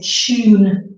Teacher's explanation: You will notice I say tune like a ch sound and not tune, because that is very difficult and very formal to say. So usually when we have a word beginning with tu, then it becomes ch, becomes chew sound